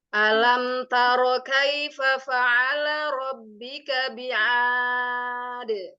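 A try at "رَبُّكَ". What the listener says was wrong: Lihat mushafnya, rabbuka atau rabbika? Suaranya.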